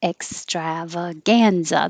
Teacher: The strav is stretched longer, but the gan is higher.